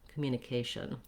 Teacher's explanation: have my tion ending which is a typical ending in english it sounds like the sh sound a schwa and an n and i almost leave that vowel out it's so short